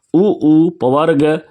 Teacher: उ पवर्ग और उ पवर्ग इसका उच्चारण ओष्ठ से होता है